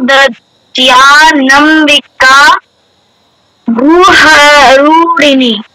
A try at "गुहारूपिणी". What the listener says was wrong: ঠিক আছে, গুহতে একটু বেশি টাইম দিয়ে ফেলেছো, ওটা করবে না। গুহারূপিণী, রুতে বেশি টাইম দেবে।